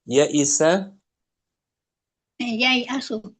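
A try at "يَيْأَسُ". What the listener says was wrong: yai asu. Nggak dihapus.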